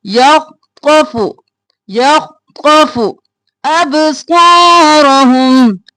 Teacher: खौ साकिन रखना है, मोटा पढ़ना है, खौ भी मोटा, फू जल्दी से